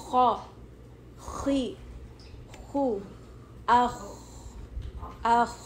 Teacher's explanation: And then خا, یہ بھی خا بھی ہیوی لیٹر ہے, تو اس میں بھی آپ کو تھوڑا ہیوی کرنا پڑے گا. ماؤتھ تھوڑا فل ہوئے گا, آپ کو لگے گا کہ آپ کی ٹنگ پیچھے سے تھوڑی اوپر ہو رہی ہے